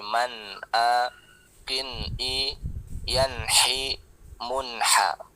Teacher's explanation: nun sukun atau tanwinnya jelas karena tidak dengung. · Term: izhar halki